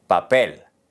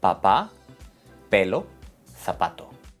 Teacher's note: La P es similar al inglés, pero sin aire.